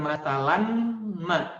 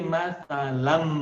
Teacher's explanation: Bacanya bukan masalan, tapi an-nya leburkan ke mim. Jadi masalam, ya, masalam, leburkan. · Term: dileburkan